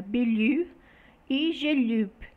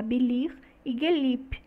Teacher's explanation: as vogais arredondadas do turco passaram a não arredondadas no turco moderno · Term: assimilação progressiva em vogais